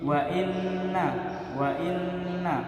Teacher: Kemudian ada bacaan ghunna musyaddadah, yaitu nun bertasdid maka ditekan nunnya